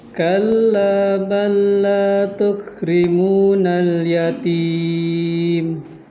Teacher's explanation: huruf pertama dimasukkan ke dalam huruf kedua dibaca tanpa gunah. Maksudnya dibaca tanpa tempoh gitu.